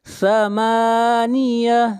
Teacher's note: یومئذ ثمانیہ، ذن اخفاء حقیقی، ثمانیہ، میم کو کھینچ کر پڑھیں گے 1 الف کے برابر، میم کے اوپر کھڑی زبر ہے